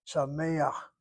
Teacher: The mem, the tzere, the chet. The patach is not a true vowel. It is artificial. It's a glide between the frontal sound of the tzere to the laryngeal chet in the throat. Sameach, you pronounce the patach before the last letter.